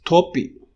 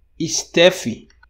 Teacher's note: Sometimes it is the case that you have Brazilians who are learning English, and they want to pronounce English the English way, but they bring their tendency to epenthesize the E into English. And then they end up pronouncing English words in a certain way, all of which can be explained with the E epenthesis.